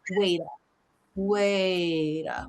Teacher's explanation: Now, that T is going to link into the schwah.